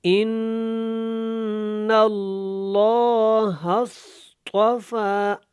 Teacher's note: ہاں جب صاد کے ساتھ ملے گا تو یہ بیچ میں الف نہیں پڑھا جائے گا، صاد موٹا ہے، طا بھی موٹا ہے، فا کے اوپر کھڑی زبر ہے تو آپ نے طافا کو لمبا کرنا ہے۔